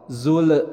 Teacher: untuk lam disukunkan, sekali lagi harus selalu diingatkan jangan sampai ada pantulan menjadi qalqalah. Zul. Nah, jangan sampai ada keluar kata le, zul.